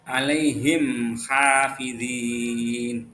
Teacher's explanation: Jadi cara membacanya terang di bibir dengan mulut tertutup. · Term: idhar syafawi